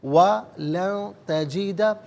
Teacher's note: ناک میں آواز لے جا کر گنگنانا، اسے اخفا کہتے ہیں